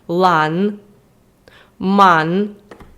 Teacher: звук це просто носова н як ми їх розбираємо з вами енка яка позначається просто літерою н називається альвіольною це означає що для того щоб її зробити Ви маєте язик притиснути до альвіол і швидко його прибрати